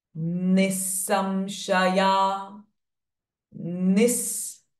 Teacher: the h sound of visarga will become s itself because it is followed by s sound